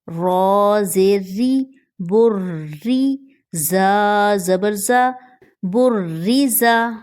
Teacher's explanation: زا سیٹی کا حروف ہے، اس کو سختی سے پڑھا جائے گا